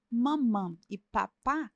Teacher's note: bilabiais lábio com lábio então mamã e papá são bilabiais né o p e o m são bilabiais